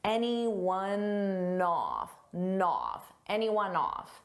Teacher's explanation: Off starts with a vowel and anyone. It ends on a n sound. So I can take that n and just add it in front of the vowel.